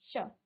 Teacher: लेकिन उच्चारण इसका तालु में होगा, यानी कि जब आप इस स का उच्चारण करेंगे तो आपकी जीभ आपके तालु को स्पर्श करेगी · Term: तालव्य